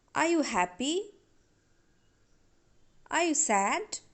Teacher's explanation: regarding yes no questions you can use rising tone